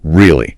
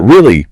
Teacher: With your voice going up at the end, that's a question.